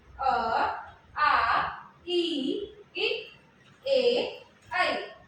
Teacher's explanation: अवृतमुखी वे स्वर होते हैं जिनमें जो ओठ है वो गोलाकार नहीं होता है। ठीक है, ओठ इसमें गोलाकार नहीं होगा, वो हमारा अवृतमुखी है।